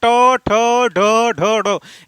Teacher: जो आपका जीवा है वह पीछे की ओर मुड़कर जो दांत के थोड़ा थोड़ा पीछे का भाग उभरा हुआ भाग है उससे जाकर टकरा रही है। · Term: मूर्धा